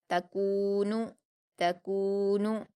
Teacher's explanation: تا پر حرکت جلدی پڑھیں گے۔ کاف پر واو مدہ ہے، 2 حرکات کھینچیں گے۔ نون پر حرکت ہے، اس کو بھی جلدی پڑھیں گے، اور تینوں حرف کو ہم باریک پڑھیں گے۔